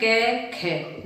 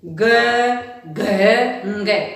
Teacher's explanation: प्राणवायु में गूंज उत्पन्न हो रही है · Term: घोष वर्ण